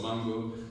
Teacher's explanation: the stress is on man